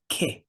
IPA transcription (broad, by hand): kɪ